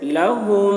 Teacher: میم میں غنہ ہوگا، یعنی میم کی آواز کو ناک میں لے جا کر گنگنائیں گے، جیسے لہم۔ دیکھیے میم، اس میم کو نہیں پڑھا جا رہا، جس میم پہ جزم ہے اس کو نہیں پڑھا جا رہا، مشدد والی میم کو پڑھا جا رہا ہے۔